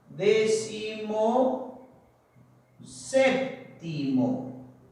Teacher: Va a ocurrir que al unirse décimo más séptimo, la primera palabrita, ¿no es cierto?, va a perder su acento, y la segunda palabrita es aquella que lo va a mantener. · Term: sílaba tónica